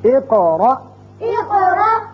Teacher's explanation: دونوں قاف جگہ پر قلقلے ہیں، دونوں جگہ ہم نے قاف کی 2 آوازیں نکالی